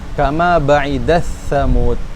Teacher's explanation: t-nya hilang kan? Itu esensi dari idgham. Hilang huruf awalnya.